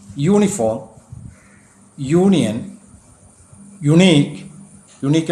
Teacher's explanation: യുവിന് യ എന്ന ശബ്ദമാണ് ലഭിച്ചിരിക്കുന്നത്. അത് ഇംഗ്ലീഷ് ഭാഷയിൽ ഒരു വൗവൽ സൗണ്ട് അല്ല.